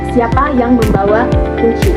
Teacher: pola intonasi pada kalimat ini itu turun di akhir karena kata tanya sudah ditanyakan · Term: kalimat tanya